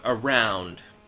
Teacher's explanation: I hope you can hear a much heavier stress on the second syllable. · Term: stressed syllable